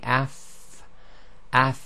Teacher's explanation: of the sound itself so when we say AF F there's the sound of the far continues it's not a sudden end to the sound · you just touch the upper incisors to the lower part of the inside of the bottom lip itself. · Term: continuation of the sound